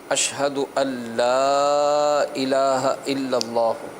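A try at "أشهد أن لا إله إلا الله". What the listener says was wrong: یہ ہلکا تھوڑا آپ کا دبا ہوا تھا، ہلکا یہ نا کھلا.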